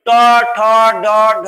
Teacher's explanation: এই ট, ঠ, ড, ঢ, মূর্ধন্য, এই বর্ণ 5টি যখন আমি উচ্চারণ করব তখন তোমরা ভালো করে লক্ষ্য করবে, দেখবে এই জিভের অগ্রভাগটা তালুর সঙ্গে স্পর্শ হচ্ছে। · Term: মূর্ধন্য বর্ণ